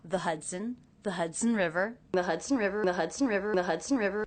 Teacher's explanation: The word the pronounced with the schwa, sometimes it's pronounced with an E vowel.